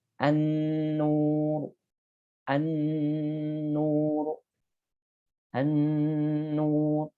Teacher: Jadi tahan dulu. Ya, karena ada gunnahnya.